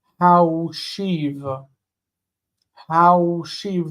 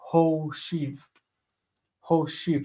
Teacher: But it's actually a Vav, so it's like saying Haushiv. Haushiv, the ow in that diphthong, how becomes o, Hoshiv. Hoshiv.